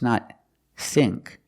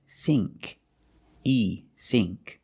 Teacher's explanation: that's a long e not a short I